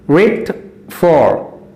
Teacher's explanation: With is unstressed, for is stressed